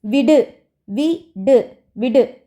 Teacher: ஓசை குறையாமல் ஒரு மாத்திரை அளவில் முழுமையாக ஒலிப்பதை என்னன்னு சொல்றோம் முற்றியல் உகரம் முற்றியல் உகரத்துல வந்து மாத்திரை அளவு வந்து குறையாது · தனி குறில் அடுத்து வரக்கூடிய வல்லின உகரங்கள்லையுமே ஒரு மாத்திரை அளவு முழுமையாக ஒலிக்கும் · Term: முற்றிய லுகரம்